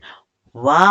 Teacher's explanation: वाह का जो उच्चारण स्थान होता है वो होता है दंतोष्ठ।